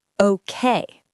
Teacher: The second part is a little stronger. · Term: natural English rhythm